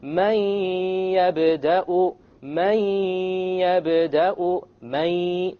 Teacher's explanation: Notice there is no man. It's immediately the mim associates with the ya, and you drop the noon sound. But you have a ghunnah, and that's the nasal sound. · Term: idgham with ghunnah